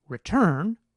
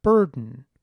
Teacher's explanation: So in word like “return”, the r vowel is stressed, and it would be transcribed with the rhotic 3